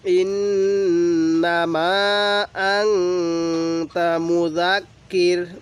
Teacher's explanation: নুন সাকিনের মধ্যে গুন্নাহ করবো মিমের মধ্যে তিন আলিফ টান দিব